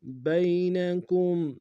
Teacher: یا لین بغیر کھینچے پڑھیں گے